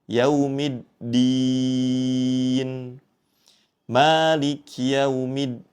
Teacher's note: hati-hati saat mengucapkan huruf dal bertasydid. Jangan sampai seperti huruf ta